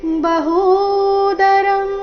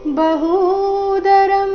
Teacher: ಹೂ ಮಾತ್ರ ದೀರ್ಘ ಈ ಶಬ್ದದಲ್ಲಿ ಬಹುದರಂ ಬಹುದೌಷ್ಟ್ರಕರಾನ್ ಬಹುದೌಷ್ಟ್ರಕರಾನ್ ಬಹುದೌಷ್ಟ್ರ ದ ನಂತರ ಬಂದಿರು ಅನುಸ್ವಾರದ ಉಚ್ಚಾರಣೆ ನಾಸಿಕ ರೀತಿ